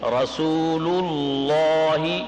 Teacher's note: آگے جو لفظ آ رہا ہے لفظ اللہ سے پہلے پیش ہے، لفظ اللہ کو موٹا پڑھیں گے. رسول اللہ، پہلا لام رسول والا، لام رسول والا وہ باریک ہے. دوسرا لفظ اللہ والا لام وہ پر ہے